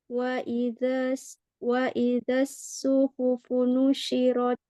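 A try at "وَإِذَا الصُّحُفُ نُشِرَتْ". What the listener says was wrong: Ya, tebalkan lagi shod. Ya, nanti latihan ya, Mi, karena ini arahnya pangkal lidahnya belum terangkat, Mi. Jadi hurufnya itu ada khusodin qid itu yang mana setiap pengucapannya pangkal lidahnya mesti naik. Jadi seperti so, bo gitu. O, wo, kho gitu ya. Lo gitu.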